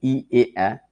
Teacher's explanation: ই এ যেহেতু সামনে যাচ্ছে তাই সম্মুখ স্বরধ্বনি